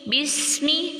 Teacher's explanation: بسمی سین کی سیٹی واضح کرنی ہے، حرکات کو کھینچنا نہیں۔